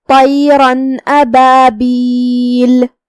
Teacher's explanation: حرف الالف حروف الاظہار میں سے ہے، جو کہ اظہار کا معنی ہے ظاہر کرنا، تو ہم یہ تنوین کو ظاہر کریں گے اور اسے نون ساکن ادا کریں گے اور بغیر غنہ کے حکم کو ادا کریں گے